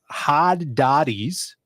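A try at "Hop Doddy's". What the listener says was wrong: It's with a P.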